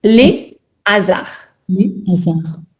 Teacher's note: Attention, il ne faut pas entendre de s hein. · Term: aspirer